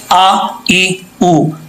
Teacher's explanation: اب یہاں پر حمزہ ہے شروع میں، حمزہ سختی سے پڑھا جاتا ہے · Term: حمزہ کی آواز